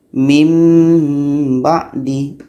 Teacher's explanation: nun mati bertemu ba Nun pun kita tukar kepada bunyi mim asalnya Hai Min ba'di yang bener Nun kita tukar kepada mim